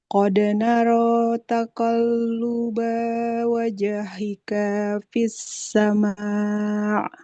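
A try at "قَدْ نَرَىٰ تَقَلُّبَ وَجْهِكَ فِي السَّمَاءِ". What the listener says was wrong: Oke, panjang pendeknya hati-hati. Enggak boleh panjang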